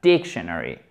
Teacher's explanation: l'accent tonique il est ici première syllabe